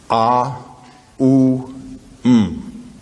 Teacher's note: In Sanskrit, the sound O is analyzed into two sounds, A and U. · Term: Om